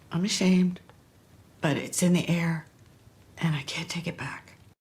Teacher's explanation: You hear that pitch staying up? It means that something else is coming up. That's the indication that there is a comma here, right?